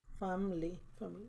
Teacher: family is one of those situations where the I is silent. It sounds family.